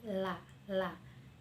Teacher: di huruf lam itu ujung lidah dengan gusi dan gigi karena ada lisaniyun